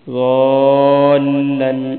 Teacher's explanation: وَلَسَوْفَ يُعْطِيكَ رَبُّكَ فَتَرْضَى، أَلَمْ يَجِدْكَ، دال پر کلکلا کرنا ہے، یتیمن، مین پہ غنہ کرنا ہے، أَلَمْ يَجِدْكَ يَتِيمًا فَآوَى وَوَجَدَكَ ضَالًّا، ضاد کو موٹا پڑھنا ہے، اس پہ مد بھی کرنی ہے، ضَالًّا، ضاد کو لمبا بھی کرنا ہے، آگے لام ہے اس کے ساتھ ملانا بھی ہے، ضاد الف لام مد زبر ضال، لام پہ آگے غنہ بھی کرنا ہے۔